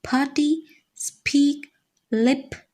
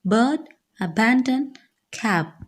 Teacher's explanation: During the articulation of p, the vocal cords are wide apart, so p is voiceless. And during the articulation of b, the vocal cords vibrate, making the sound voiced. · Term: bilabial, plosive or stop